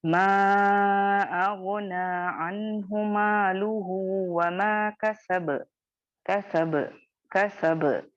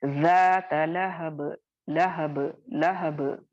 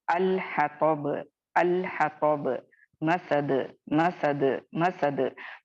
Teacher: हरकत को हटाओगे, साकिन दोगे और फिर आप उसको बाउंस करोगे, ठीक है, आसानी से आराम से बाउंस करोगे, ना उसमें ए ऐड करोगे ना उसमें शिद्दत पैदा करोगे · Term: कलकला कुबरा